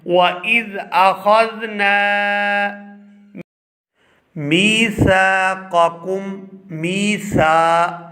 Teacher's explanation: جیسے ہم اس کو پڑھ رہے ہیں، وَإِذْ أَخَذْنَا مِيثَاقَكُمْ، میسا، یہاں سا کے آگے بھی الف خالی ہے اور اس سے پہلے ہے زبر، تو یہ الف بھی الف مدہ ہے اور ہم سا کو 2 سے 3 سیکنڈ کھینچ کر ادا کریں گے